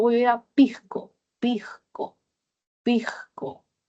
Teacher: Luego tenemos aspiración de S como una J suave